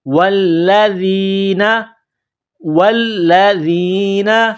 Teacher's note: چلتے ہیں۔ والذین، واو کو لام کے ساتھ پلس کرنا ہے، لام میں سختی کرنی ہے، ذال کو نرم کرنا ہے ، ذال کو یا کے ساتھ پلس کرنا ہے، ذال یا